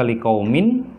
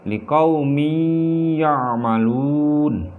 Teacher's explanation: Liqaumi, dan ketika menyebutkan liqaumi, mi-nya di situ ditahan kira-kira 1 sampai 2 ketukan sehingga terjadi dengung atau sengau di situ ya, baru itu disebut dengan idgham bil gunnah ya.